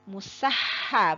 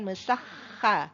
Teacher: Ha itu dari tenggorokan tengah dia dibaca tipis dan bersih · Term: huruf ha